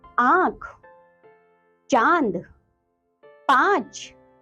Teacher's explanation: जिन वर्णों पर अनुनासिक यानी कि चंद्र बिंदु लगा रहता है उनके उच्चारण में वायु नाक और मुंह दोनों से बाहर निकलती है।